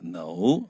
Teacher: 这 个 no 那 个 尾 音 是 要 往 上 的 因 为 你 还 没 有 讲 完 话